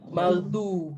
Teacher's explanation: keluar dari tepi lidah menyentuh geraham atas, bukan dari depan lidah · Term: huruf dot